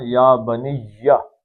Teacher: تو تجوید دیکھ لیتے ہیں جی، یا مد بدل دو حرکتیں ہیں، بنی یا پہ تھوڑا سا تالو کے ساتھ زبان کو لگا کے کھینچنا ہے ذرا